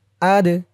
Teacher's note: আদ দাল কলকলার হরফ ধাক্কা দিয়ে পড়তে হবে।